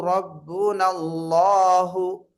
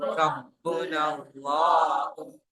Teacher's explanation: நூனுக்கு அடுத்து வரக்கூடிய அலிஃப் என்ன செய்யப்படவில்லை உச்சரிக்கப்படவில்லை